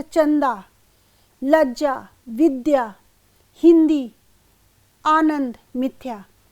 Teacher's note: जब संयुक्त या द्वित व्यंजन होते हैं तो उसके पूर्ववर्ती स्वर, जैसे चंदा, लज्जा, विद्या, हिंदी, आनंद, मिथ्या, यहाँ पे जो उसका पहले का स्वर है, जैसे विद्या है तो विद्या में वी में जोर पड़ रहा है, लज्जा में ल में जोर पड़ रहा है, मिथ्या में म में जोर पड़ रहा है। तो ये यहाँ पर स्पष्ट है कि स्वराघात इन अक्षरों पर, विशिष्ट अक्षरों पर हो रहा है।